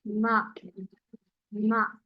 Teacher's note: दोनों होठों के अलग होने से आवाज पैदा हुई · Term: तबाउद